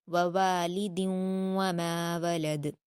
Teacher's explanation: دوسرے واو میں الف مدہ ہے تو اس کو ہم کھینچ کر پڑھیں گے